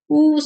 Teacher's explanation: the tongue is positioned close to the roof of the mouth. ஊன்னு சொல்லி பாருங்க, அந்த லிப்ஸ் வந்து டங் வந்து க்ளோஸ் பண்ற மாதிரி போயிடும்.